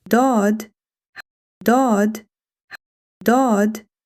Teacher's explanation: This is Daad. The articulation of Daad, one side of the tongue touches the upper molars. In English, similar to D in dome, but with much deeper sound.